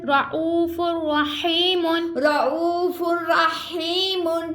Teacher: تنوین کے بعد را آگے ہم غنہ نہیں کریں گے اور ادغام کریں گے